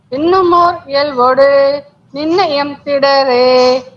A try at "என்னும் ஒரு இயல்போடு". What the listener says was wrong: என்னும் ஒரு இயல்போடு அப்படி குடிலா சொல்லுங்க. நெடிலா கேக்குறது.